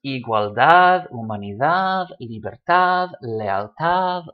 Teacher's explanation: all stressed on the last syllable because they all end in a D.